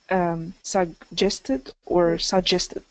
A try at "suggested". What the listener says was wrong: So we definitely want to still make sure there's a G in there. So what happens is we kind of close off our that G sound in the back, and then we release into the J sound. So you don't want to take out that G, that first G. Suggested.